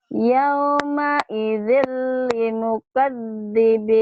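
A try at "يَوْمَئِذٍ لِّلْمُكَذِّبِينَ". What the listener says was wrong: Lil, ada lilnya di situ. Yauma idzil lil, gini kan ada lim. Lam, hayo. Yauma idzil lil, ayo. Yauma idzil lil mukadzibin.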